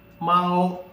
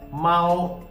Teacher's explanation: M plus AO, Mao, and you have to drag a while. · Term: first tone